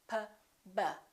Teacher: P and B have the same point of articulation because both of them require the lips to close